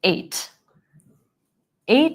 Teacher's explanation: that vowel a becomes like I instead of eight